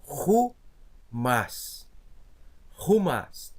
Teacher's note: Uma aspiração forte que a gente diz. Então, vou ter que colocar como se fosse um H aqui na frente.